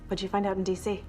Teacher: Add to this what that is pronounced with a stop T most of the times, but in this case, when we connect what did you together, the T is dropped, and we connect it to Jew, and as a result, we get would you.